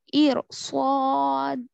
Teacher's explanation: इर सो इर, असल तो पढ़ना चाहिए बारीक, लेकिन रॉय साकिना के बाद हरफ मुस्तालिया है, इस वजह से इस रॉ को मोटा पड़ेंगे।